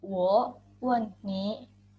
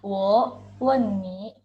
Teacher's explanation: Wen menggunakan nada keempat yang artinya adalah bertanya.